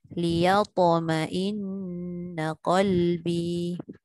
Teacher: Liyatok tu tebal sikit dan dengung pada ma'in tu.